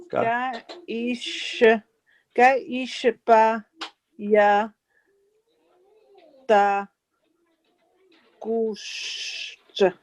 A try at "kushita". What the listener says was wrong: It's a ta at the end. Ta. Kushita.